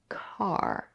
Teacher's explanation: the stop C comes at the beginning of the stressed syllable we have to aspirate it this means that we release an extra puff of air